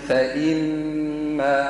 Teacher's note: عندك الغنة حركتين والمد